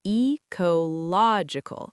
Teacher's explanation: ecological stress falls on the third syllable.